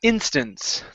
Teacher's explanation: Now that last word is instance. The stress is at the beginning.